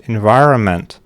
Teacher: So here the second syllable is stressed.